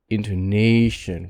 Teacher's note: stress is pronounced by length longer vowels like intonation where the a is longer and it also has a pitch rise intonation and it sounds louder because of that we talked a